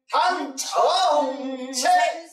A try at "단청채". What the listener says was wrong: 응이 나와야지 단청채 세게 두루 묻혀서